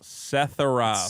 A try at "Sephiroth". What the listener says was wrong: Sephiroth. No, Seth. Like an F. Sephiroth.